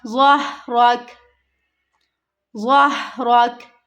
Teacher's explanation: ज़ह नहीं पढ़ना, हा की आवाज़ नहीं यहाँ पे आनी चाहिए। ज़ह नहीं पढ़ना, ज़हरक, ज़हरक।